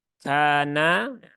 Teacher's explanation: yang kaidah umumnya kemudian Kana Kaf dia punya sifat hams ya Ada Alif setelah fathah maka kafnya dibaca panjang dua harakat